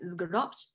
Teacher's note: the verb to tie up it is pronounced as isguropt so here we have a complex coda of two consonants due to the addition of the dual first person suffix